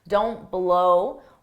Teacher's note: drop that T so you don't take a pause